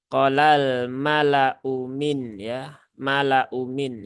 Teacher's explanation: lamnya ini terbaca pendek ya. Ya, jangan terbaca panjang ya. Jadi jangan dibaca dengan qolal mala'u ya, tetapi qolal mala'u min ya, mala'u min ya.